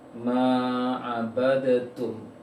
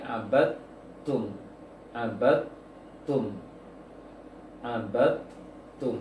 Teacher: Walaupun sebagian besar kaum muslim sudah hafal, sudah tahu dan sudah hafal, dalnya tidak boleh dipantulkan karena dalnya sudah tergabung ke ta. Seharusnya abadatum, jangan abadatum tapi abadtum, abadtum, abadtum.